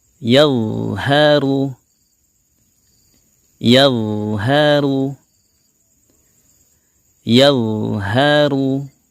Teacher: Huruf dha juga memiliki sifat tebal. Kita jangan lupa untuk menaikkan pangkal lidah kita untuk menebalkan suaranya, dan juga ketika dia sukun kita alirkan juga suaranya ya, tanpa kita alirkan udara atau nafasnya.